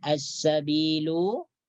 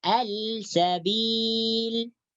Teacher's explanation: Jadi cara membacanya lam terus dimasukkan ke dalam sin. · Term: idgham syamsiyah